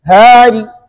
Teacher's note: را کا جو 2 زیر ہے اس میں سے ایک زیر کا تیسرا حصہ پڑھیں گے. جب زیر کا تیسرا حصہ پڑھیں گے تو زیر پڑھ گیا نا، جب زیر پڑھا گیا تو پھر ساکن نہیں ہوا. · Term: وقف بھی روم